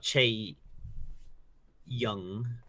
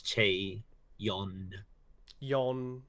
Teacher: n not ng at the end